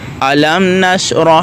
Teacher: آگے ہے اظہار شفوی یعنی میم ساکن کے بعد با اور میم کے علاوہ کوئی اور حرف آ جانے کی صورت میں میم ساکن کو اس کے مخرج سے ظاہر کر کے پڑھنا